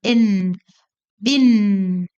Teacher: N, o final fica aqui, N, bin, a língua no céu da boca. E quando for M no final, os lábios se fecham.